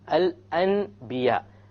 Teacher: It is the letter ba. Anytime the letter ba occurs after a Noon Sakina or a Tanween, instead of pronouncing the N sound, you pronounce the M sound. Okay? And it is important when you do this, by the way, that you do a ghunna. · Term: iqlab